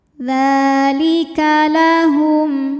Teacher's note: mim sukun ini kita bunyikan dengan jelas jadi bunyi m dan tidak ditahan · Dza ini hukumnya adalah mad tabi'i, yaitu mad tabi'i muqaddar. Karena dzal barisnya fathah panjang, maka dzal kita panjangkan cukup 2 harokat saja. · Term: izhar syafawi